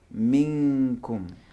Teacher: نون ساکن کے بعد کاف آیا ہے تو نون کو کاف کے مخرج میں چھپائیں گے